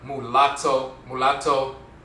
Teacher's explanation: the tongue Taps the roof of the mouth once so there's an interchange between the rolling R and the L